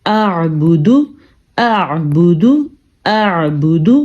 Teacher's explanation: حمزہ زبر عین، اع، با پیش بو، اعبو، دال پیش دو، اعبودو، اع. دیکھیں دونوں آوازیں آ رہی ہیں، حمزہ کی بھی اور عین کی بھی